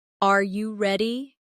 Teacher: when a native speaker asks a yes or no question like, Are you ready? the pitch of their voice goes up at the end. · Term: intonation